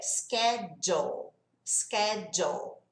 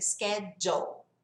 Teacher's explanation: Esse LE tem o som só do L